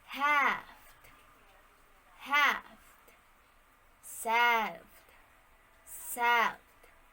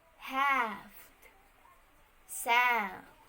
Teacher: the al phoneme seems to be pronounced as the combination of ae sound or the a sound